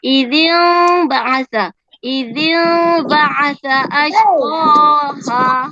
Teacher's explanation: Okey, tapi ada ulama tajwid mengatakan kita baca seolah-olah macam ada kita boleh masuk mulut kita selai kertas sebab kita, tapi mim tadi jangan sampai kita tutup mulut. Jangan kita tutup rapat. Kita genggang sedikit.